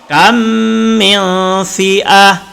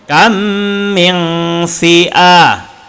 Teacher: Idgham mithlain bacanya dengung 2 harakat, hurufnya ada 1 mem. Jadi apabila ada mem mati bertemu dengan mem, maka kena baca dengung.